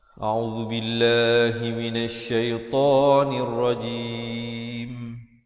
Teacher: A'udzu di hujung lidah, billah lafzu jalalah dibaca nipis 2 harakat.